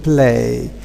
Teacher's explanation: When we have got especially L immediately following a voiceless stop like P, this L is not totally voiced, but we can say it is devoiced, just because of the influence of the voiceless sound which is placed before it.